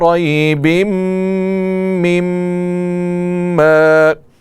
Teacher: دونوں میم میں غنہ ہوگا اور غنہ کی مقدار ایک الف ہوگی